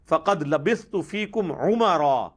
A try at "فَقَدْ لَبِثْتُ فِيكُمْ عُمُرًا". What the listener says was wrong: لفظ ہے عمرا، میم پر پیش لیکن میم پر زبر پڑھی لیکن عین کے تلفظ پر فل توجہ دی ہے۔